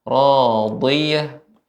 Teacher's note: sifat itbaq, terkumpulnya suara. Jadi tetap harus tebal.